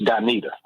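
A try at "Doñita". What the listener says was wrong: No, Donita. Put that tilde over that in. Donita.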